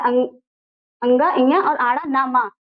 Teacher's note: नासिक व्यंजन जो हमारे नाक और मुख से बोले जाते हैं।